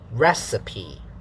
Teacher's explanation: three parts stressed unstressed unstressed strong weak weak